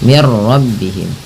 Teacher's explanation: Nah, karena di sini nun mati bertemu ra, langsung saja diidghamkan. Idgham itu memasukkan bunyi nun ke ra sehingga bunyi nunnya tidak terdengar lagi. Langsung mir rabbihim. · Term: idgham bila gunnah